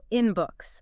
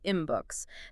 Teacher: That's because the N sound at the end of in changes to an M sound to match the B at the beginning of books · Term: assimilation